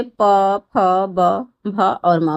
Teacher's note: अ भी उसके बाद जो ओष्ठ है तो ओष्ठ से प, फ, ब, भ और म बोला जाता है।